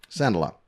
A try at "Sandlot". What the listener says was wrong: Oh, he adds another letter. Sand-A-Lot.